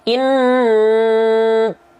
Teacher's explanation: Nah, berarti dengung itu ada 2 indikator, ada 2 indikasi atau 2 indikator. Yang pertama masuk ke hidung, yang kedua sengau suaranya. Untuk memastikan apakah nun bertasydid kita atau mim bertasydid kita sudah gunnah atau belum, maka lafalkanlah panjangkan bunyi an atau amnya.